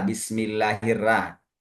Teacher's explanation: di antara suku Indonesia itu ada baca huruf ro itu dengan ra